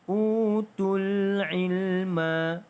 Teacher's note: Mad asli bertemu hamzah wasal, maka tidak ada mad di situ.